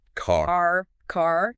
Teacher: in most American English, you've got that strong R like in car